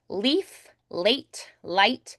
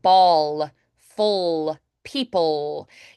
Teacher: A dark L is more like ball, full, people. You can feel that light. It feels more forward and frontal. The dark L, ball, you can feel it's a little more centered vibrationally here.